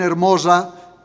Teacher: he leído con una S sonora, ¿no? Igual que la S sonora del catalán, del francés o del portugués o del italiano, porque todavía se conserva esa distinción entre S y S en la lengua de los judíos españoles.